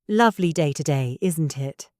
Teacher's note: Notice how my voice goes up at the end. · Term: question tags